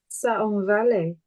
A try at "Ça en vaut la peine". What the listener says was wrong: Ah oui, but you're missing the end. You have to say the end. La peine. Yeah, it's all together.